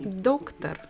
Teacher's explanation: we stress the first syllable